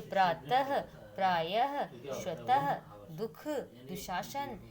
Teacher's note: यानी कि अंत में हल्के हा का प्रयोग होता है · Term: विसर्ग